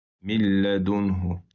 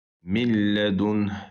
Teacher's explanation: burada idğam eləyirik, amma günnəsiz idğam